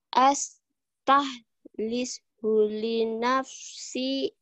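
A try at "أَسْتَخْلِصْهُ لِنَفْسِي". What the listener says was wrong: Ya, gitu. Tapi belum keluar khonya aja ya. Astakhlis li nafsi. Bukan astah, tapi kotor. Astakhlis li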